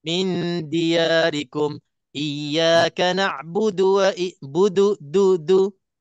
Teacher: Jadi pastikan dal itu sentuh gigi depan atas. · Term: makhraj dal